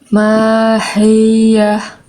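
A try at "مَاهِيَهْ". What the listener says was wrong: Jangan ditekan terlalu kuat. Rasain di dalam. Mahiyah.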